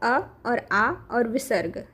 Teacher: तो अभी हम देख लेते हैं कि कंठ में आएगा अ और आ और विसर्ग, है ना। ये तीनों का उच्चारण जो है कंठ से होता है